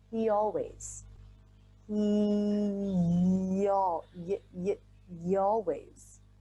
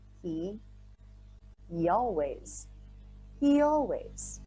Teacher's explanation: when you're linking a word that ends in the E vowel, a very common ending sound in American English, to a word that begins with a vowel, it helps to put a Y sound in between the words